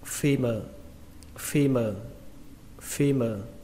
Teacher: trọng âm của nó rơi vào âm đầu tiên là âm phi. Âm phi trong từ châu Phi.